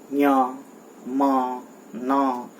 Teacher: इन सभी को हम अनुनासिक कहते हैं क्योंकि इनके उच्चारण में माँ और ना, नाक, मुंह और नाक दोनों का प्रयोग होता है।